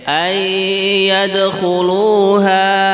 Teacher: Tapi kalau diwakofkan karena mungkin nafasnya pendek ya, ayyadkhuluha, ini 2 harokat saja.